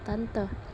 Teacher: vokal E bagian tengah atas pusat tak bundar pada kata tante